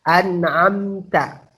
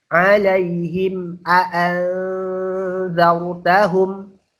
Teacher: Syafawi itu artinya bibir, berarti jelas di bibir. Bibir kita jelas. An'amta, tidak ada samar-samar, tidak ada dengung, tidak ada tempo. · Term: izhar syafawi